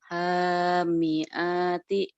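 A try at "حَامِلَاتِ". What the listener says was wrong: Hamilati. Itu bukan alif ya. Kalau di tengah itu lam.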